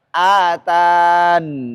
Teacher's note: ya-nya dihilangkan dan mensukunkan nunnya